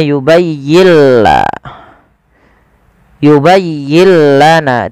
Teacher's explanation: Idghamnya adalah nun sukunnya diidghamkan ke huruf lam. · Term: idgham bila gunnah